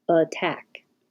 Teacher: the a changes to uh attack